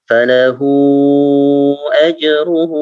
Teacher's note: Untuk hu yang pertama itu 4 harokat ya. 4 harokat atau 5 harokat. Jadi baca agak panjang.